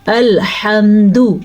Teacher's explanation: الحمد اس طریقے سے پڑھنا ہے، دال کو لمبا نہیں کرنا، کیونکہ اگر دال لمبی ہو گئی تو کھڑی الٹا پیش بن جائے گا یا واو مدہ بن جائے گا، جبکہ یہاں پہ ہے دال پیش دو۔